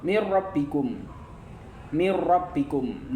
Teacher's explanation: Mirbikum. Nun sukun bertemu ro. Di sini nun sukunnya lebur ke ro. · lebur atau masuk melebur ke ro tapi tidak mendengung maka hukumnya adalah idgham bila ghunah